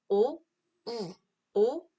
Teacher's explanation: 오보다 우가 입술이 앞으로 훨씬 더 돌출됩니다. 그래서 오, 우 했을 때 돌출돼요.